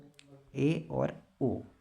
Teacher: अर्ध समृत में मुख द्वार आधा बंद रहता है